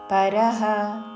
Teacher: విసర్గ ఉచ్చారణ ప లాగా చేస్తూ